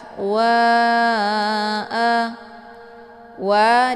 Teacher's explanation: Alif sebelumnya harakat fathah dinamakan dengan mad thobii zahiri tah waa wa dibaca panjang boleh empat atau lima kali ketukan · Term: Mad Jaiz munfasil